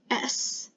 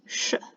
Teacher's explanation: Now make the S sound and pull your tongue back. It should turn from S into sh, the SH sound.